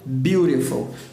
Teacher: quando o T está entre vogais, ele passa a ter o som do R em português